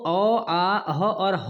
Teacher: कंठ से ही बोले जाते हैं